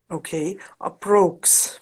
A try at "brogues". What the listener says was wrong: That's it.